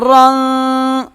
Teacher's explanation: را موٹا پڑھیں گے، یہ الف نہیں پڑھیں گے